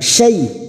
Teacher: syai fathah bertemu ya sukun, dua huruf yang harus kita lunakkan